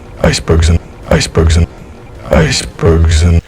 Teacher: The word in is reduced to a quick The vowel is essentially dropped. Icebergs, zn, it's a Z to N pronunciation. Icebergs and icebergs and icebergs and.